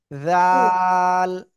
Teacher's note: জিহ্বার আগায়, সামনের উপরে 2 দাঁতের আগায় লাগাতে হবে।